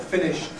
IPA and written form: ˈfɪnɪʃd (finished)